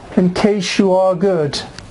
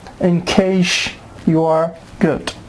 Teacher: S with Y gives sh sound.